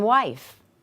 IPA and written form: wif (wif)